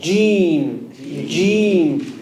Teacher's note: It's not from the sides of the tongue.